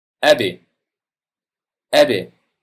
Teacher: Birinchisi, a, b, sukun. B sukun bo'lganda yengil tebratiladi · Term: yengil tebratish